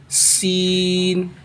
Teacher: हमारे दांतों को मिलाने से निकलता है सीटी की आवाज़ से